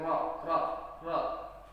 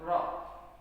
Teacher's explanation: Jadi ketika tasdid bacanya harus ditekankan Ar-Rahman. Kemudian huruf Ra makhrajnya ada di lidah kita di langit-langit Ra. Kemudian nafasnya dihembuskan Ra. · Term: makhrajnya huruf Ra